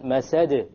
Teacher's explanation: Hablum, hablum, and then masad. There's a slight more emphasis on the masad because it's at the end of a word. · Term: qalqalah